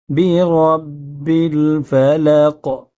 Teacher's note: را کو منہ تھوڑا سا گول کریں گے، زبان کو بیچ میں لائیں گے تو را پر ہو جائے گی